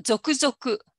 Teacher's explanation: there is no accent it just keeps the pitch keeps Rising